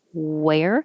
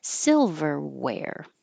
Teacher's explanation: could be that your teeth are touching your bottom lip so if you round your lips extra small wear then your teeth can't touch and it has to be a w